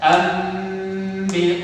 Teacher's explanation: berubah mim disertai dengan dengung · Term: iqlab